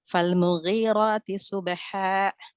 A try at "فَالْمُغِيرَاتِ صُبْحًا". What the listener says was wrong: انتبهي صبحاء لا انتبهي حتى لا تأتي بهمزة صبحاء لا صبحاء